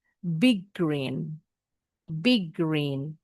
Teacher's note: Baca huruf G-nya jangan dua kali bunyinya bukan big green ada dua kali karena ada jeda. Jadi baca G-nya satu kali tapi agak ditekan.